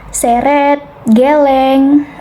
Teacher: madya, bawah, depan dengan posisi mulut semi terbuka menghasilkan bunyi seperti seret, geleng.